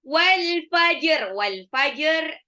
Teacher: ini ada alif lam qamariyah, jimnya qalqalah ya. Ya, sebetulnya di situ ada tanda waqaf al-waqfu mamnu', sebaiknya terus, tapi karena ini di akhir ayat nggak apa-apa berhenti.